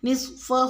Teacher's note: آیت نمبر 3 میں لفظ نصفہ میں صوت کو پوری یعنی کہ موٹا پڑھیں گے، اور ہا الٹا پیش کو ہم 1 الف کے برابر پڑھتے ہیں، لیکن جب اس پہ مد آ جاتی ہے تو ہم اس کی مقدار کو 3 الف کے برابر کھینچ کر پڑھتے ہیں